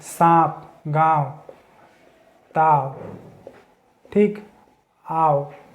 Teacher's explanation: हवा मुंह से अधिक और नाक से कम निकलती है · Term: अनुनासिक